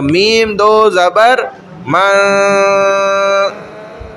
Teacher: ناک کے بانسے میں آواز جاری ہے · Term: غنہ